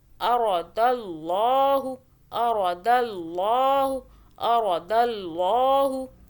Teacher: اراد اللہ، اللہ کو موٹا پڑھا، اللہ سے پہلے دال پہ زبر آ رہا ہے. را کو موٹا پڑھنا ہے، را کے اوپر بھی زبر ہے